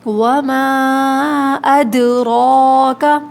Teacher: قلقلہ مطلب آواز پلٹتی ہے جب یہ ساکن ہوتے ہیں، تو یہاں دال ساکن ہے تو آواز پلٹ کر آئے گی ، وما ادراک، را کے اوپر کھڑا زبر ہے، موٹا پڑھیں